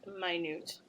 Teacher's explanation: with the long vowel eye stressed on the second syllable and a long u sound